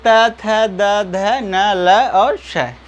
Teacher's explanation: आप देख पा रहे हैं आपके जिह्वा ऊपर वाले दांत के नीचे टच कर रही है कि नहीं, दांत को टच कर रही है कि नहीं कर रही है, बिल्कुल कर रही है।